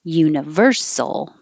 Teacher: the stress moves to the second to last syllable